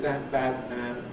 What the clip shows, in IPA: ˈðat bad ˈman